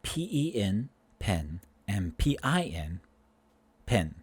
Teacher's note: these two vowels in certain words are joining together. They're becoming indistinguishable. · I pronounce them pen, pen, and pin, pen, the same exact way. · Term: the merging of vowels, merging of vowels